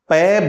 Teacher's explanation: तो पै बोलने का आप प्रयास करेंगे तो पहले आपके दोनों होठ बंद हो जाएंगे और जब वापस खुलेंगे तब पै की ध्वनि निकलती है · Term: पै वर्ग